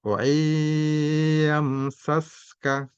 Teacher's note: Tapi karena idgham, ya, nun mati tidak dibaca, masuk ke huruf ya langsung. · Jadi baca dengan dengung, ditahan 2 atau 3 harokat.